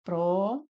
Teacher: Nós temos aqui como sílaba tônica o pró. Então, aqui nós temos uma proparoxítona, né?